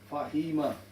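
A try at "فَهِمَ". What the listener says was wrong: You've got to be faster. Fahima. Yeah, the Fatha, Kasra, Dhamma. These are short vowels which cannot be stretched. Which cannot be stretched. So the way to pronounce it is quick. Fahima.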